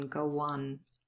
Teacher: There's intrusion here. We have a w appearing between go and on